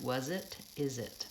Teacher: I run that Z on and jumps onto the next word